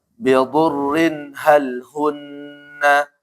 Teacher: Dot tebal, rohnya tipis.